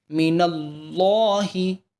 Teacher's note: یہاں پہ اللہ کے لام کو پر کریں گے، لا نہیں پڑھیں گے